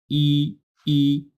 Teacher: আই উচ্চারণ করতে হয় ই, ই, এই যে জিহ্বাটা দেখতেছেন, এই জিহ্বাটা উপরের দিকে চলে গিয়ে হালকা করে একটু জায়গা বের করে দিয়ে ই